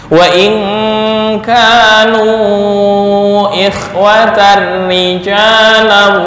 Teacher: Ini tanwin bertemu ra idgham bila gunnah. Cuma karena ra-nya kasrah dibaca tarkik.